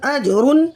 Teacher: جیم حرف قلقلہ میں سے ساکن حالت میں کلمے کے درمیان میں آ رہا ہے، تو یہاں قلقلہ صغریٰ ہوگا، اور را کی 2 پیش کی تنوین کے فوراً بعد حرف حلقی کا 5واں حرف غین آ رہا ہے، تو ہاں یہاں اظہار حلقی کا قاعدہ ہوگا، غنہ بالکل نہیں کریں گے۔